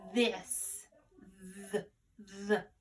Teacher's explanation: It's a voiced sound, okay? You can feel it in your throat for the hard sound.